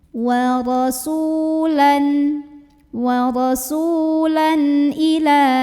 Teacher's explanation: Kemudian di sini ada hukum idhar halqi karena ada tanwin fathah yang bertemu dengan huruf halqi atau huruf tenggorokan yaitu hamzah. Maka cara membunyikannya adalah dibaca dengan jelas tanwinnya. Jadi ini bunyinya masih tetap bunyi nun sukun n.